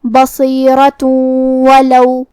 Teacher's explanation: ہم یہ تنوین کو واو میں ملا کے غنہ اور تشدید کے ساتھ یہ حکم کو ادا کریں گے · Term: ادغام